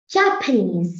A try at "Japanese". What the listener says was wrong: No, you were wrong. It's, no, honey, it's knees is stressed here. Japanese. Japanese. So এখানে আমরা বাংলাদেশে বলি জাপানিজ, but এটা হবে Japanese. Japanese. Japanese. Japanese. Japanese.